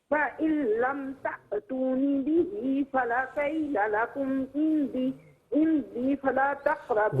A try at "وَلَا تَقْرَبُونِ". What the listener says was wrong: ولا ہے، فلا نہیں ہے، ولا تقربون.